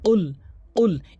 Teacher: উল জিব্বার গোড়া উপরে তালুতে লাগাতে হবে, কফ কফ এভাবে ধাক্কা দিয়ে উচ্চারণ করতে হবে